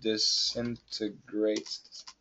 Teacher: And many Americans will cancel the T in disintegrates.